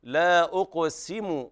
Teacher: وهنا بيان كسر السين، لأن السين وقعت بين الهمزة المضمومة والقاف المقلقلة ثم ضم الميم، فلا بد من الاعتناء بالكسر.